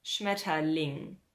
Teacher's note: You will hear that we don't actually say E, but rather something like Ö.